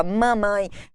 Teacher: Bilabial, como acontece em mamãe, na primeira sílaba, mamãe. Ninguém fala cantão.